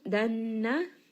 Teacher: nun is going to have a ghunna. So, just make sure that you are resting on this for a little bit and bringing this up into the nose.